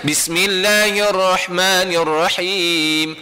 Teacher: Ha pedas tekan dekat tengah halkum.